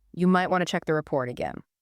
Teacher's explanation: Notice how the pitch of your voice naturally goes up a little bit at the end.